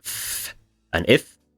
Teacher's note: an unvoiced labial fricative is f and f, and the voiced one is the same, except you make your voice box vibrate.